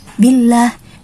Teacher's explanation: Kalau billah pakai a, vokal a, karena dia dibaca tipis, tarqiq gitu.